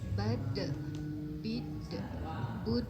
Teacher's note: Kemudian ada sifat qalqalah atau memantul suaranya.